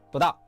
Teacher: 不 知 道 becomes 不 到. The middle 知 gets swallowed. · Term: connected speech